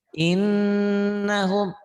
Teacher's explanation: Nyamber dan ada ditahan, ada dengung ke hidung. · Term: gunah